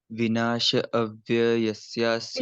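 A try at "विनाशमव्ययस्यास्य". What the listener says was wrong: किसका बोला आपने? शम है। विनाशम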